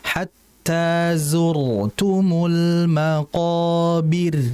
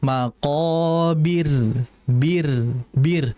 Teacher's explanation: Maqobir bir tipis tapi tetap getaran ada itu. · Maka kalau harokatnya kasrah sebelumnya, ro-nya jadi tipis. Jadi jangan dibaca tebal. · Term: rnya jadi tipis